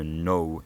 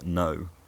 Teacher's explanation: diphthongs in some west country accents might be smoother than in modern london accents